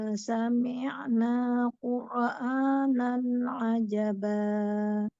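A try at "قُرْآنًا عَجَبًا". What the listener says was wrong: Fathah ain, buka lagi. Qur'a, qur'a, qur'a. Dua harokat saja.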